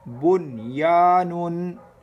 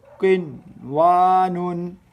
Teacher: ان اظہار مطلق، ان چار کلمات میں نون ساکن کے بعد حروف یرملون ایک کلمے میں آنے کی وجہ سے ادغام نہیں بلکہ اظہار مطلق ہوگا، اس لیے ان چار کلمات میں غنہ نہ کریں